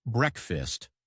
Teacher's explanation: The a is short and the fast sounds like fist.